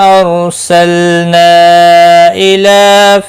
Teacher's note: لام ساکن کو ہلانا نہیں. نا مد منفصل ہے، 3 الف کے برابر کھینچ کر پڑھیں گے. لام کے اوپر کھڑی زبر ہے، 1 الف کے برابر کھینچ کر پڑھیں گے.